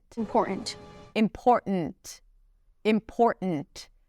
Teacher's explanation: And then there isn't really a T there. It's a glottal stop. And then she releases the T. It's not a held T when she pronounces it. It's just t.